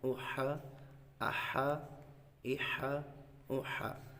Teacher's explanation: یہ ہا حلق کے درمیان والے حصے سے ادا ہوتا ہے